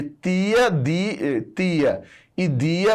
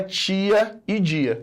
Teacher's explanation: Quando eu falo tia e dia, essa criaturinha aqui, que é a língua, passa a encostar aqui, ó. E aí você sai de um fonema que era tia e dia, que é alveolar, porque a sua língua encosta nos alvéolos do dente, e passa a encostar no palato. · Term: processo de palatalização